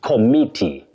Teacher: You say ko, then stress me, committee